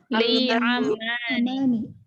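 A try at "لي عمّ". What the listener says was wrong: Li amman. Pakai tasydid ya. Li amman.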